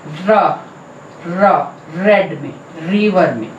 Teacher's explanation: अगर आप इसे बोल के देखें तो tip of the tongue teeth ridge के पिछले हिस्से को टच कर रही है। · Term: पोस्ट एल्वियोलर